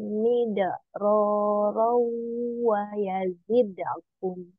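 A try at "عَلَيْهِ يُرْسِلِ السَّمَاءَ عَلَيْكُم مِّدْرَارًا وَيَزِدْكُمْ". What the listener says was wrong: Sudah bagus, tinggal kol-kolannya dilembutkan aja ya, jangan ditekan. Alaikum midororong wayazide gitu ya, wayazidekum. Wayazidekumnya sudah bagus, tinggal midororong. Ya, samakan ya.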